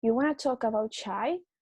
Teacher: the tonic syllable is not the last lexical element of the unit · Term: tonicity